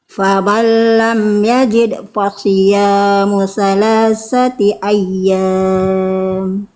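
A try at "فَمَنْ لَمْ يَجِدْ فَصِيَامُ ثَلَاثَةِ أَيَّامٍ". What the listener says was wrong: Oke, dal sukun kolkolahnya hilang Bunda. Tunaikan dulu kolkolahnya.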